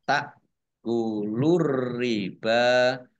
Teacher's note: ar-riba alif lam syamsiyah karena tidak dibaca langsung masuk ke huruf berikutnya yaitu ro